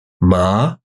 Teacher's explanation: second tone they'll call it a three five because it starts somewhere in the middle and Rises up